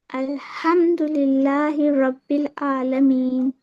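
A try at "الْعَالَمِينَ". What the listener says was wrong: आइन पे प्रैक्टिस कीजिए आलमीन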